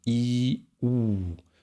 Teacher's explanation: U ist ziemlich weit oben, genauso weit oben im Grunde wie i, ü, nur ganz weit hinten.